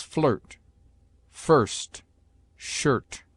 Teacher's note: I is often sounded before r, as a short u, as flirt, first, shirt.